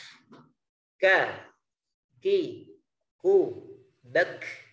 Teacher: makhrajnya pangkal lidah di depannya huruf qaf, yaitu huruf kaf